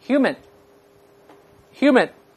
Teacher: 最后失去爆破，舌尖顶住上颚膛